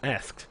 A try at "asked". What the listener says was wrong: You are really over enunciating that lisp there. Asked.